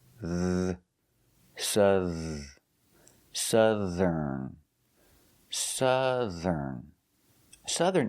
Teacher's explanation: And the TH makes a voiced sound, th, like this and that.